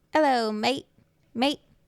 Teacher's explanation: It's kind of going up at the end. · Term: uptalk